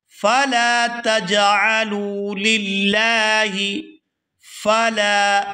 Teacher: یہاں لام کو کھینچ کر ادا کیا جائے گا کیونکہ اس کے ساتھ الف مدہ ہے